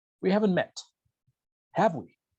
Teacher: Voy a ascender mi entonación en mi tag, porque le estoy diciendo a la persona, no estoy seguro, estoy casi, incierto, estoy 100% incierto de que no nos hemos conocido. Entonces, voy a usar un rising intonation, una entonación ascendente.